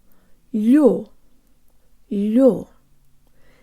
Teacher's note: The L is soft, so the tongue is high and forward. There's almost a Y sound built in, and the tongue moves from very high to very low in order to pronounce the full stressed O sound.